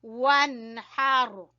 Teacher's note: نون کے بعد ہا گلے کے درمیان سے